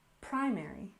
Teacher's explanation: we stress the first syllable in primary